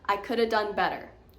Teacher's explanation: Could have turned into coulda.